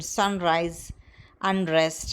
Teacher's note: it is realized as post-alveolar nasal, as in sunrise, unrest, etc.